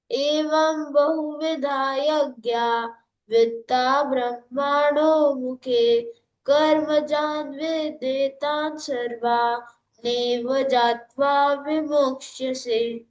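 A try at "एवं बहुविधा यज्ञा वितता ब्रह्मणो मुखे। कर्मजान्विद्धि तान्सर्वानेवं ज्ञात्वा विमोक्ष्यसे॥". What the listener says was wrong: और दूसरा तान सर्वा नेव बोला, नेवम है।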